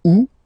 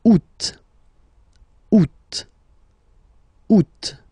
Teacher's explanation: And then here, two options because, well, two options are acceptable in French. The first one, you don't pronounce the final T. Ou. Second one, you pronounce it.